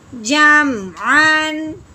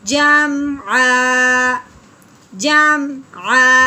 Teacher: وقف کی صورت میں ایک زبر ختم ہو جاتی ہے تو پیچھے ایک زبر اور الف پڑھا جائے گا. جیسے عین الف زبر آ، یہ رہ جائے گا.